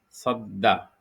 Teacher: 2 दफ़ा पढ़ने की वजह जो है वो तजदीद होगी, क्योंकि तजदीद जब दाल पे लगेगा तो दाल जो है 2 दफ़ा पढ़ा जाएगा और इसकी ख़ासियत ये हमने बताई कि ये हर्फ़ जो है पहले पिछले अल्फ़ाज़ से पढ़ा जाएगा उसके हरकत के मुताबिक और उसके बाद अपने हरकत के मुताबिक पढ़ा जाएगा।